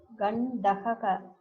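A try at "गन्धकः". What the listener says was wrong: there's a problem between gakara and kakara in your pronunciation. It looks somewhat same. Not gandagaha. I'm hearing like that. Gandakaha.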